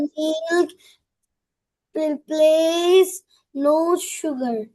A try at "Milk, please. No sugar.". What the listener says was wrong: আবার বলো, এখনো আটকে আটকে বলছো।